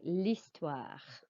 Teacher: You do not pronounce the H of l'histoire. It's like it's just an I, l'histoire.